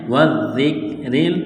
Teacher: را کے نیچے زیر ہے تو را کو باریک کرنا ہے